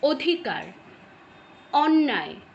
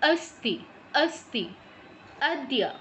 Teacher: অধিকার আদ্য অখন আমরা বাংলায় উচ্চারণ করছি ঠোঁটটা গোল হয়ে যাচ্ছে কিন্তু সংস্কৃতে যখন উচ্চারণ করছি ঠোঁটটা কিন্তু গোল হচ্ছে না